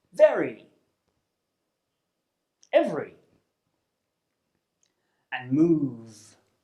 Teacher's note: To produce the sound, rest your top teeth on your bottom lip and force air out through your teeth whilst voicing out · The V sound is a sound from the consonant pairs group, and it's called the voiced labiodental fricative. This means that you create friction between the bottom lip and the top teeth.